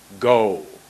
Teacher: when you say go, there's a W at the end of that